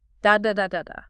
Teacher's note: In syllable timed languages, generally speaking, each syllable gets roughly the same amount of time, the same duration, like a steady beat.